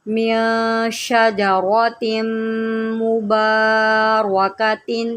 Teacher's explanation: میم کے اوپر جو ہے وہ تشدید ہے، اس کو ہم غنہ کے ساتھ پڑھیں گے